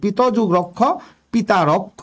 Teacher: যেমন পিতঃ যোগ রক্ষ, পিতঃ যোগ রক্ষ, তাহলে বিসর্গ ধ্বনির পরে র ধ্বনি আছে একটা, এর প্রভাবে এই পিত অ স্বরটা আ হয়ে গেছে, তাহলে পিত যুগ রক্ষ পিতা রক্ষ, এই যে আ দীর্ঘ হয়ে গেছে, দীর্ঘস্বরের আগম হয়েছে, পিতা রক্ষ, পিত যুগ রক্ষ পিতা রক্ষ।